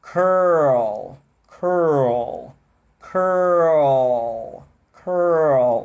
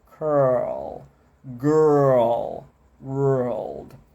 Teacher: Língua lá atrás, no R, cur, desenrola com L